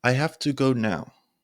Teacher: lowering your voice as you reach the end of the sentence